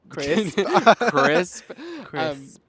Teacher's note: So crisp starts with a k, which is a velar plosive sound right in the back of your throat.